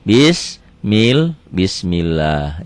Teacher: lafadz Allah dibaca tipis karena sebelumnya baris dibawah